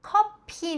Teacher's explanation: まずコ、激音ですね。息を出してコ 、そしてコではなく唇に力を入れないでです。で、顎を少し下げてコで、後ろの▁P▁は激音なので息を出して▁P▁です。커피▁Bではなく커피。▁집에서▁쉴▁때도▁있는데▁그래도▁커피를▁마시러▁갈▁때가▁많아요.▁집에서家で▁쉬다,▁休む、쉬、二重母音▁위▁です。この口を前に突き出してこの状態でいと音を出します。쉬、쉴▁때도▁있는데休む時もあるんですけど